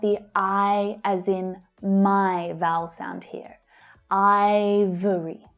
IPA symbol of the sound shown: aɪ